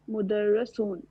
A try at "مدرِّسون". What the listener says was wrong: دیکھیں رو کے نا اوپر تشدید ہے.